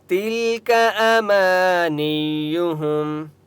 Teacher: تل لام کے اوپر سکون ہے، تا کو لام کے ساتھ ملائیں گے، تل کا کاف کو لمبا نہیں کریں گے، حرکات کو لمبا نہیں کرتے، ٹھیک ہے، زبر زیر پیش کو لمبا نہیں کرتے۔